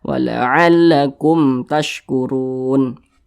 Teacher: Huruf ra dibaca tebal, dibaca tafkhim karena dia memiliki tanda baca dhammah. Kemudian run dibaca panjang, ini namanya mad arid lis sukun.